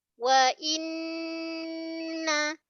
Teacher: Wa inna hamzah. Hamzah ni makhraj dia pangkal tekak. Pangkal kerongkong kita. Kita tahqiqkan ataupun kita namakan dengan kita ketatkan bunyi hamzah i vokal i wa inna.